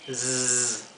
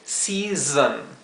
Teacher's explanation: La dificultad de la palabra season es que la segunda S se pronuncia como la S zumbada o vibrada